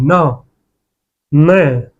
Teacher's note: न में कुछ वायु मुख से निकल रही है और कुछ नाक से भी